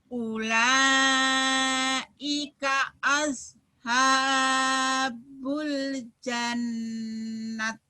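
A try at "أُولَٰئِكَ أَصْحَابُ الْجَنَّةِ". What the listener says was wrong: jannah, tanya jadi hak. Bukan. Sodnya ya sholat baso sholat soto. Ulaika ashabul jannah gunnah. Jannah.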